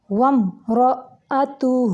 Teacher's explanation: آگے دیکھیں وم، یہاں پہ میم ساکن کے بعد را ہے، یہاں پہ اظہار شفوی کا قاعدہ ہے، میم کو لمبا نہیں کریں گے، صرف ظاہر کریں گے۔ وم رأتہ، را موٹا ہے، حمزہ جھٹکے سے پڑھیں گے، تا کے اوپر پیش ہے، اس کی ادائیگی کے وقت ہونٹوں کو تھوڑا گول کریں گے، اور ہا کے اوپر الٹا پیش ہے، اگر ہم ملائیں گے تو اس کی 2 حرکات عربیہ جتنی اس کی لمبائی کر کے پھر اگلا لفظ اٹھائیں گے۔